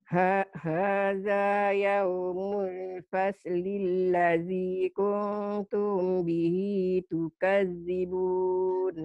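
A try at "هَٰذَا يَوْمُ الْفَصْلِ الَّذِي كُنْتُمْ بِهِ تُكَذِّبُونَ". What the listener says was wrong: Kuntum bihi tukadzibun. Yaumulnya jangan ditahan. Hadza yaumul fasli ladzi, ya, jangan ditahan.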